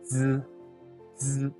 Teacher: I will use the tip of my tongue to touch the back part of my teeth. Z. And just at the moment when it touches, I'll use a little air and pronounce the first one.